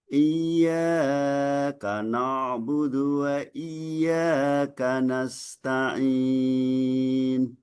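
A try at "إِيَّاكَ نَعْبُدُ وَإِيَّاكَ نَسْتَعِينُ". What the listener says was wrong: Iya pertama terlalu panjang, lebih dari 2 harokat. Iyyaka terlalu panjang tadi bacanya karena nagomnya iyyaka enggak. Iyyaka na'budu.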